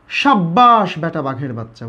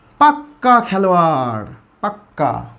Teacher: শব্দের জোর প্রয়োগ করার জন্য ব্যঞ্জনধ্বনি দুইবার উচ্চারণ করি